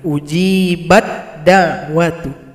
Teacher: idgham mutajanisain ta bergabung secara sempurna pada huruf dal